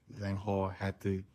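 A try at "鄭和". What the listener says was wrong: Zhang He, it's okay. It's he, but it's pronounced her.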